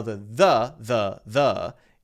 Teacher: we're not putting much stress on it just a relaxed uh vowel sound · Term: schwa